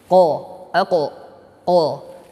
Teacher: huruf qaf keluar dari pangkal lidah. Qa, sifatnya adalah al-isti'la, lidah menaik.